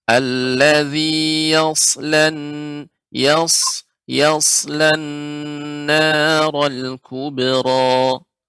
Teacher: sad di sini huruf isti'la sehingga dibaca dengan tebal.